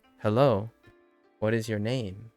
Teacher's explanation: So it'd be, hello, what is your name? With the emphasis on name.